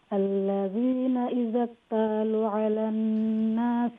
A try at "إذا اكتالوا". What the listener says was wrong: नहीं إذا اكتالوا تا लंबा लाम लंबा إذا اكتالوا على الناس